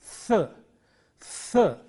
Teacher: Th, this sound is th. It is a dental sound produced at the upper teeth. Th, th. The friction is very important here.